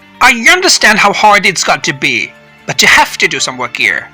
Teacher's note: i pause for just a moment between the two sentences and notice how my pitch the musical note of my voice goes up on stressed content words and goes down at the end of each sentence